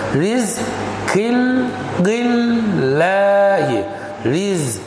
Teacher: Empty mouth. Why? Because previous letter is with kasra. Rizqillahi.